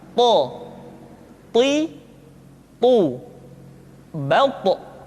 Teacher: To diucapkan dengan menyentuhkan ujung lidah dengan gusi-gusi dua gigi seri bagian atas. Sifat yang dimiliki oleh huruf to yang mesti nampak ketika kita ucapkan adalah sifat al-isti'la dan sifat al-itbaq. · ketika to diucapkan, suara kita terdengar menebal